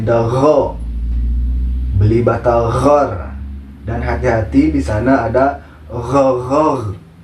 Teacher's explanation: ghin itu lebih sedikit ngoroknya dibanding huruf kho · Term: huruf ghin